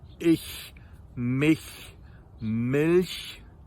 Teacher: if you have a very narrow E sound, like in the words of ich, mich, milch, those sounds are very, very, very, very soft CH sounds. So if you widen your mouth like this, E, your mouth automatically, or more or less automatically, produces a very soft CH sound.